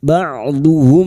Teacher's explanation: mim sukun bertemu hamzah idhar syafawi, mim sukun dibaca jelas tanpa mendengung